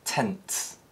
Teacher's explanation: a plosive is inserted between nasal and fricative sounds so a word like tense might be pronounced tense consequently this